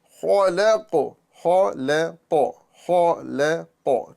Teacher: خا میں زبان کی جڑ اوپر ہوئی، لام میں نیچے آ گئی، اور پھر قوف میں اوپر ہو گئی. تو خا کو پر، لام کو باریک، اور قاف کو پر.